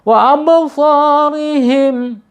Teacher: Wa absarihim ya, di situ ada ba sukun ya. Ba sukun, ingat kalau ba sukun berarti huruf kolkola atau bergetar atau mantul ya. Kolkola, dan kolkolanya kolkola sugro karena ada di antara huruf hijaiyah yang berharokat.